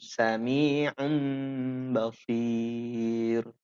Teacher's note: cara membaca iklab ditahan 2 harokat. Persis seperti kita baca tanwin ketemu mim.